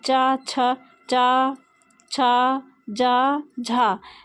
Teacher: जैसे तालव्य का मतलब तालु, जो तालु होता है हमारा, जब हम इनको बोलते हैं तालव्य व्यंजन को, तब क्या होता है, हमारी जीभ जो है वो तालु से टच होती